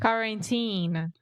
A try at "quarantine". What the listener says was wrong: the first syllable is where we are having some issues